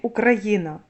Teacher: р твердий оскільки стоїть перед а